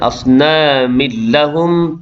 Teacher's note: Kemudian asnamin lahum, tanwin bertemu dengan lam, idgham bila gunnah, memasukkan tanwin ke dalam lam tanpa dengung